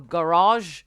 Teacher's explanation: Et donc garage pose pas de problème et est très réduit comme ça avec une accentuation en un, deux, un garage, c'est ce qu'elle dit en fait, mais on accepterait aussi garage, quelque chose comme ça, ou garage en anglais britannique, c'est-à-dire accent toujours sur la première syllabe